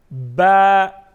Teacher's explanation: बा में एक अलिफ के बराबर मद होगी, यानी एक अलिफ के बराबर इसको खींच के पढ़ेंगे, आवाज़ में जुम्बिश पैदा करेंगे